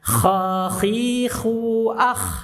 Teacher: Gesekannya agak keras dibandingkan ghain. Kha digesek, tenggorokan atas kita agak keras, agak kasar. Ya, ingat fathah enggak boleh monyong.